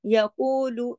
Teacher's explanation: کو 2 حرکات اور لو ایک حرکت · یقولو انہا نون پہ تشدید ہے، ادھر غنہ ہوگا بڑا، اس کو کہتے ہیں اکمل غنہ